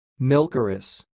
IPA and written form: ˈmɪlkərɪs (milkeress)